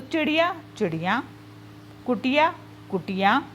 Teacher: अनुनासिक लगाकर उसको बहुवचन में बदल देते हैं, या हम चंद्र बिंदु बोल के चंद्र बिंदु लगा के उसको बहुवचन में बदल देते हैं।